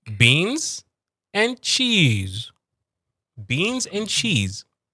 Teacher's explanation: So cheese is going downwards.